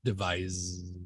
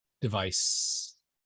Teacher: I have the buzzing device there we go that's our difference one has the buzz which we would call voiced the other without which is unvoiced